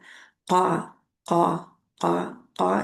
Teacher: पीछे से जुबान की जड़ जो है वो ऊपर उठती है और कौवे के करीब नरम तालु से जाके लग जाती है और वहां से का अदा होता है।